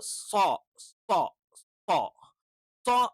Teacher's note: നാവ് മുകളില് നല്ല രീതിയിൽ ബെൻഡായിട്ട് അണ്ണാക്കിന്റെ മുകൾ ഭാഗത്ത് ടച്ച് ചെയ്യുന്നുണ്ട്.